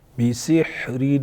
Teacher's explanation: تنوین ہے اظہار کریں گے کیونکہ آگے حروف حلقیوں میں سے عین ہے